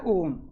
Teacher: इनके उच्चारण में ह्रस्व स्वरों के उच्चारण की तुलना में तिगुना समय लगता है। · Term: प्लुत स्वर